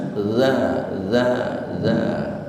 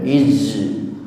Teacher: makhrajnya di ujung lidah hampir ketemu dengan gigi atas